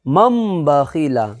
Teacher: مم بخیلا، یعنی نون ساکن کو میم سے بدل کر کے، تبدیلی کر کر کے، اس کے بعد نون ساکن میں اخفا کر کے، ایک الف کے برابر ناک میں آواز کو چھپا کر کے پھر ہم ادا کریں گے